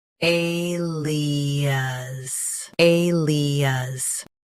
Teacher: Stress A. Keep lee smooth, then soften us.